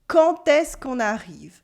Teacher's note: the que loses its e before a vowel